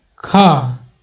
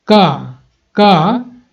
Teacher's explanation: जिसको बोलने में ज्यादा हवा की जरूरत पड़ी, यानी कि जब बोल रहे हैं तो उसका ज्यादा हवा का जरूरत पड़ रहा है, ज्यादा हवा का जरूरत पड़ रहा है तो उसको महाप्राण, और जब कम हवा का जरूरत पड़ रहा है तो उसको बोलेंगे अल्प प्राण